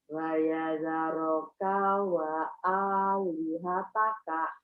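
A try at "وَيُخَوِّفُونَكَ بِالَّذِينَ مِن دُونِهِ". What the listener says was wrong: Kurang cepat Bu. Kalau ibu dengar suara saya kan seperti orang percaya diri ya Bu ya. Suara saya tuh. Tapi suara ibu kayak, mohon maaf ya, kiri kanan.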